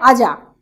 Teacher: আর র ধ্বনি অনেক জায়গাতে নেই বর্জিত হয়েছে